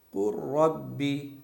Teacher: लाम की जर्रा बराबर भी आवाज नहीं आनी चाहिए ऐसा लगे कि लाम यहां पर लिखा हुआ ही नहीं है